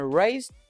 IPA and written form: reɪzd (raised)